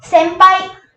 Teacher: The letter comes before pa letter and hence the sound will become ma.